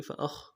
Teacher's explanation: فأخ میں خا کو موٹا ادا کرنا ہے، اخ آواز جاری رہے گی. فأخ، را کو موٹا کرنا ہے.